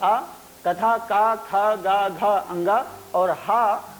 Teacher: का खा गा घा अंगा और हां तथा विसर्ग का उच्चारण स्थान कंठ होता है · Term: कंठ स्थानीय